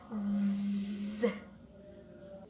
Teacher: Z sound is voice. The vocal cord vibrates during its production. · To create Z sound, the front of the tongue is placed close to the tooth ridge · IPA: [z]